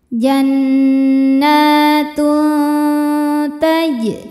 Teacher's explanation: Sebab ada tanwin dhammah menghadapi huruf ta. Cara bacanya bunyi tanwin disamarkan menuju makhraj ta disertai dengungan. Dengungnya sedikit ya karena ta ini makhrajnya dekat dengan nun. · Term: ikhfa aqrab